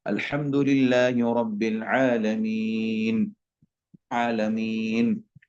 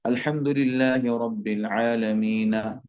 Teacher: आखिर वाले को सुकून कर देना